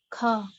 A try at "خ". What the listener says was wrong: کھا نہیں، خو. ہاں خو نہیں، جب خو بولیں گے آپ تو آپ کے دونوں ہونٹ گول جائیں گے. ہاں خو آپ کی جو زبان بڑی ہے، جو ریشہ یعنی پچھلا حصہ جو ہے وہ ذرا اوپر اٹھے گا.